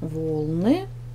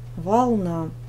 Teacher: в первом слове ударение падает на первый слог волны, во втором на второй слог волна.